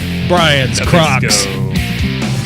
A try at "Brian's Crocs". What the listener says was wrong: Brian's what? You really got to enunciate that croc with a C, not ch.